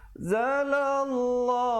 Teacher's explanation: lafzul jalalah 2 harakat dan dibaca tebal